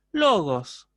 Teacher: no hay un descenso tonal no se produce el descenso o sea la la entonación queda como incompleta en